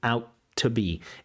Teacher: She says turned out, and she doesn't say out to be. Again, we have that double T, and so we have this accommodation where the first T disappears.